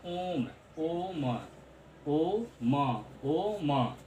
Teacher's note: आप खींच के बोल रहे हैं, थोड़ा ओम बोलने में खींचने यानी जोर लगाना पड़ा है। ओम काफ़ी थोड़ा समय तक बोल रहे हैं। · जब आप बोल रहे हैं ओम तो थोड़ा समय तक बोल रहे हैं, खींच के बोल रहे हैं। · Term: प्लुत स्वर